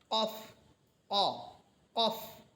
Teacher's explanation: একেবারে জিহ্বার গোড়া থেকে এটা উচ্চারণ করতে হবে। জিহ্বার গোড়া তার বরাবর উপরের তালুর সাথে লাগবে। এটা কাফের মতো যেন না হয়, বরং একেবারে গোড়া থেকে কফ, অ, কফ। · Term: দুই নুক্তা ওয়ালা কফ, নোক্তাওয়ালা কফ